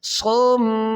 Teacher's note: صم میم مشدد ہے تو اس کے اندر یہ ہوگا، میم کے اندر مشدد غنہ ہوگا، تو یہاں پر غنہ کریں گے